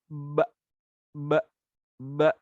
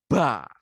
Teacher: Syiddah itu suaranya juga tertahan. Udaranya tertahan, suaranya juga tertahan. · Nafasnya, udara yang ada pada mulut itu ditahan, tidak boleh dihembuskan. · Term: jahr